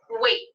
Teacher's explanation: wait ends with the sound T, t, t, and T is a voiceless sound